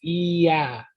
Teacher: naturally when you're saying that vowel, E, it ends in a Y consonant. Like if you're, like I said, if a vowel precedes another vowel, that first vowel then it takes on that consonantal value.